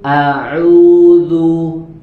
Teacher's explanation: Kemudian pada kata yang diberikan atau dicontohkan setelahnya, yaitu pada kata a'udzu, maka pada huruf hamzahnya harus jelas, ya, dibaca tipis. Tidak boleh kita menebalkan huruf hamzah di sini.